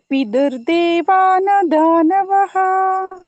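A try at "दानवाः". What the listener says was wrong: ದಾನವಾಹ ದೀರ್ಘ ಇದೆ ವಾ.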